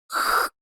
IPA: x